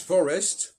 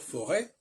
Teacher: Il est clair que même quand il n'y a pas d'accent, il faut aussi ne pas prononcer le S.